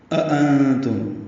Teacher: ہم پہلے حمزہ کو اقصی حلق سے، دونوں حمزے کو اقصی حلق سے ادا کریں گے، لیکن پہلے حمزے کو اقصی حلق سے ادا کریں گے اور اس پہ جہر کی صفت ہوگی، دوسرے میں تسہیل کی ہوگی۔ نون ساکن پہ اخفا ہے، نون ساکن کے بعد تا آنے کی وجہ سے اخفا ہے۔